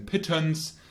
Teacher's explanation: the central mid sound would, for example, be the as in pittance. This sound is called the schwa.